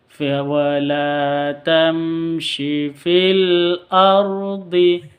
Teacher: Wala tamshi, mim sukun bertemu dengan shin, jelas bacanya karena izhar safawi